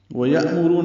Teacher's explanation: ویأمرون حمزہ ساکن جھٹکے سے ادا ہوگا، راپور پڑھیں گے، رو و مدہ ہے۔